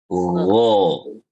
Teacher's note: Huruf ghain itu suaranya tuh tebal dia. Dia tuh punya sifat isti'la. Suaranya gho.